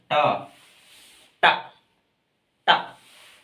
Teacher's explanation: जीभ ऊपर से लग के एकदम नीचे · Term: मूर्धा